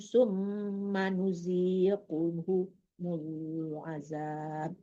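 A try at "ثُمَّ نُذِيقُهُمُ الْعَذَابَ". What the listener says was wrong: Ya, zalnya dilembutkan ya. Summa nuzi, jangan nuzi ya, jangan zai tapi zal, lembutkan zalnya.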